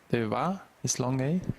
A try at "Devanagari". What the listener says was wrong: No. Long I. Devanagari.